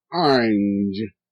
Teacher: now notice the A is making a short I sound